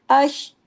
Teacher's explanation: शीन पे जम जाइए, वहीं पे रोकिए, लेकिन वक्फा नहीं करना